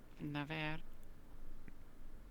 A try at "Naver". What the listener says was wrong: He never rolls his R's. It is Naver. Naver. It is correct.